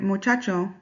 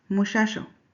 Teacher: Although there are some states in Mexico like Chihuahua in which people pronounce the ch as sh like the word muchacho would be pronounced mushacho but that is an accent of chihuahua.